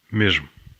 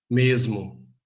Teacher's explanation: Before a voiced consonant, in European Portuguese it's j. In Brazilian Portuguese it's z in most accents.